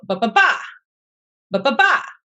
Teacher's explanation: It's the pattern unstressed, unstressed, stressed. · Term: anapest